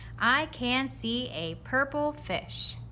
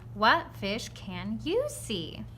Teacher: there's a little bit of inflection at the end, meaning my voice goes up a little bit